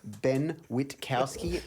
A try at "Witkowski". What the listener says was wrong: Pronounce the T and the K. Witkowski.